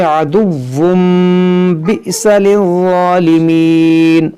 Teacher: تنوین کے بعد پھر با ہے تو یہاں پر اقلاب ہوگا